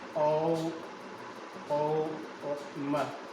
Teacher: ये जो मैंने संकेत किया है ये प्लुप्त स्वर का संकेत है। यानी जो ओ की ध्वनि है उसे ध्वनि को हमें 3 बार में क्या करना है? उच्चारित करना है। हम बोलते हैं ओम।